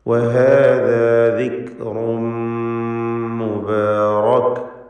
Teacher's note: വഹാദാ എല്ലാ അക്ഷരങ്ങളും തർക്കീഖ് ചെയ്ത് ഉച്ചരിക്കേണ്ട ഇസ്തിഫാലിൻ്റെ ഹർഫുകളാണ്, നേർപ്പിച്ച് പറയാം. അതാണ് തർക്കീഖ് എന്നുകൊണ്ട് ഉദ്ദേശിക്കുന്നത്.